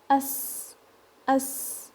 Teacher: Now with sin, it's a sharp sound. You hear like a whistle in it. As, as. It's a soft sound.